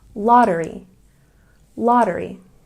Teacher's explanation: Lottery has a stress on the first syllable.